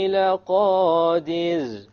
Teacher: What type of ra is that? Light, because it is silent and before it is a kasra.